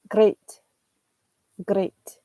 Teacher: he's constantly rolling his R's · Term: Spanish R